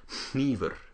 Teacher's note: Icelandic uses unvoiced nasal consonants, and so you have this awesome word for knife, which is hnífur. You'll also notice that the R should be unvoiced.